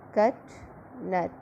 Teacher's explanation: Short low front spread vowel